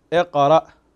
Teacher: فنقلقل القاف هنا، نحرص على قلقلة القاف كذلك